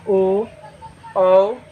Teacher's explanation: दोनों जगह से कंठ से भी और ओट से भी जैसे ओ औ कंठ से भी आवाज आ रहा है और ओट से भी · कंठ से भी आवाज आ रहा है और ओष्ठ से भी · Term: कंठोष्ठ